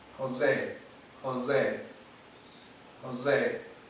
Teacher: Y tenemos entonces que la que pronuncian sería la sibilante alveolar sonora.